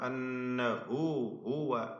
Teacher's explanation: ഒന്നാമതായി വഅന്നഹു ഹുവ, ഷദ്ദ് നൽകപ്പെട്ട നൂൻ, നൂൻ മുഷദ്ദദ 2 ഹറക്കത്തിന്റെ അളവിൽ മണിക്കണം. അതിൽ 2 ഹാ തുടർച്ചയായി വരുന്നു. അന്നഹു ഹുവ വ്യക്തമാക്കി ഹാ ഉച്ചരിക്കണം.